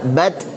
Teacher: Tabbat meskipun ta itu punya sifat hamas tapi dia juga punya sifat syiddah. Syiddah tertahan suaranya. Kalau hamas mengalir nafasnya. Dan syiddahnya lebih dominan, lebih kuat daripada hamasnya.